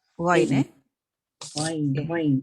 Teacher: dia huruf rahawah tapi kebanyakan orang menyebut dia agak apa? Syiddah. · Jahar lah, tak ada angin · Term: huruf ghain